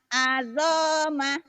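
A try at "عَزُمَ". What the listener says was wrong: Azuma. Bukan azoma. Azuma. Azuma.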